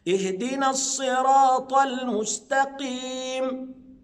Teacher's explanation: قف مكسوره صحيح مفخمه بس ادنى درجات التفخيم لانها مكسوره